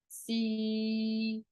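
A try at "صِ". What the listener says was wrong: Don't say C like this one. C. There has to be some difference between this one and this one. This one is C, like in English, C, or like the letter C. This one still has some heaviness in it. Si.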